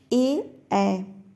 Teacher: कंठ तालव्य स्वर में ए ऐ